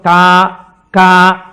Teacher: కా కా పలకాలంటే ఎక్కడ పలకాలి? కంఠం దగ్గర పలకాలి.